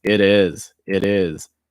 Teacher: notice that that t takes fast d sound